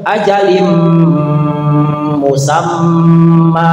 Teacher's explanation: Tapi secara bahasa itu memasukkan secara istilah ya memasukkan satu huruf ya atau satu perkara yang memang dimasukkan kepada huruf berikutnya. Jadi ajalin linnya itu hilang masuk kepada mu. Ajalim musamma panjang ada alif ya. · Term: idgham bigunah, idgham